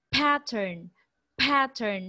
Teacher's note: So there is an extra effort, there's an extra air that you exerted upon saying that word pattern. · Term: aspirated